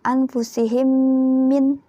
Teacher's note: Adanya di mim sukun. Mim ketemu mim, bacanya juga berdengung. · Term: idgham mutamatsilain